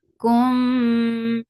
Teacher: As you will touch meme, your lips should be in a straight position and you are keeping the sound in your nose for a longer time because this is idgham shafawi